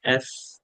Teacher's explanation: উপরের দাঁত নিচের ঠোঁট, উপরের দাঁতের সাথে নিচের ঠোঁটের একটা মিল হবে